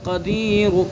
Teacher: تو را کا قاعدہ یہ ہے کہ اگر پیش ہوگا، جیسے قدیر کے اوپر پیش ہے تو ہمیں یہاں وقف الروم کرنا ہے تو یہ را مرامہ ہو گیا. تو اس را کو ہم پر پڑھیں گے چونکہ را کے اوپر پیش ہے